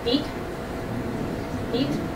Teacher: you can feel that it's high up and towards the front of your mouth · the vowel e as in the word feet is a high front vowel